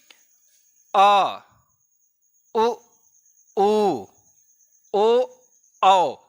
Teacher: ये जीभ का पीछे वाला भाग सक्रिय हो रहा है, इसलिए ये वर्ण यहां सम्मिलित है, मध्य भाग के अंतर्गत ये आ रहा है और अग्र भाग की श्रेणी में ये वर्ण आ रहा है।